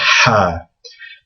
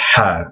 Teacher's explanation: It's almost like the sound that you make when you're taking off your glasses and you kind of blow from the back of your mouth to get to clean your glasses.